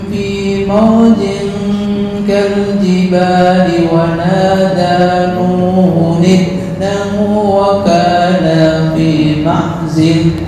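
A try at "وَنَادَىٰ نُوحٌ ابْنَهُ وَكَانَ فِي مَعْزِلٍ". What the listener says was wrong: Kol-kolahnya yang mantap dikit ya. Nuhun ibnahu, Nuhun ibnahu wa kana fi ma'zil.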